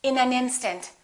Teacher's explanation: first sentence in an instant we wouldn't say in an instant we would connect the final consonant to the next vowel so this n and this a would be said together listen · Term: linking